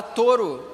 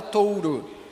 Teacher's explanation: tu vai tirar o som da semivogal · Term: supressão